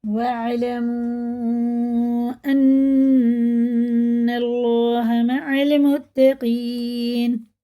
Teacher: الف پڑھا نہیں جائے گا، واو سیدھا عین میں لگے گا، اور اللہ کلام زبر کے ساتھ ہوتا ہے، پر پڑھا جاتا ہے، پر معنی منہ بھر کے پڑھنا، موٹا کر کے، نون میں شد ہے، غنہ کر کے پڑھیں گے۔